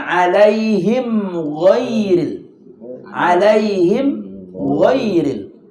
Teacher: Jadi alaihim kemudian jangan sampai saktah di situ. Alaihim ghairil, jangan sampai saktah di situ. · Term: idhar syafawi